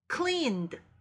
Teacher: 이 clean에 ed가 더해지면 clean n 소리가 끝나는 그 n에 하는 소리가 울리는 소리이기 때문에 ed도 울려서 cleaned 이렇게 발음이 돼요